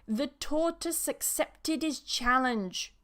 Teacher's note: That duh moves over because we removed the h